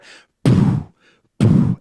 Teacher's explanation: So we can go to the unvoiced kick, which I always teach as you say boo, like a scary ghost, boo. You take away the ooh, the voicing of it, and you just whisper it.